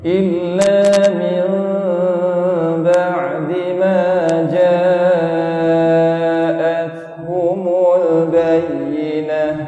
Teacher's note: Ja'itu mad wajib muttasil eh. Mad wajib muttasil 4 ataupun 5 harakat.